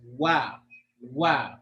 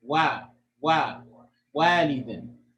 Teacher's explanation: So when you say Wa, so their lips are together in the beginning, then they're released. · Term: Waw mutaharrik